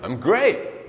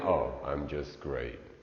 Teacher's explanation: notice that their intonation is falling